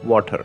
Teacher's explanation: most Indian accents stress a lot on consonants, specifically the R and T are distinctly noticeable when we speak